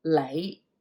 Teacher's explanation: Lay has a little bit of up tone at the end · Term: low rising